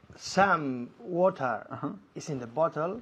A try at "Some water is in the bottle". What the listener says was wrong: Fantástico, me encanta como dices some, con esta M tan fuerte.